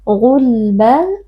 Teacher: huruf ghain juga huruf tafkhim dibaca dengan mengangkat pangkal lidah